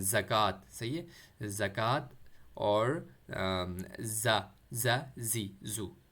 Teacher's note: زا بھی سمپل ہے، زا زی زو، زی ساؤنڈ جیسے انگلش میں زی پڑھتے ہیں ہم، زی کا جو ہے تلفظ ہی ہے زا، اور وائبریشن کے ساتھ پڑھتے ہیں